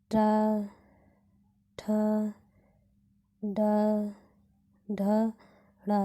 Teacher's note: ट ठ ड ढ ड़ यह सब मूर्धन्य व्यंजन है